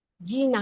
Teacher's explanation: जी ह्रस्व आणि ना दीर्घ